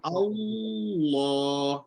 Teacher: Lidah belakang ni kena angkat untuk sempitkan kerongkong supaya cuba sebut naik then shoot teruslah. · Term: tafkhim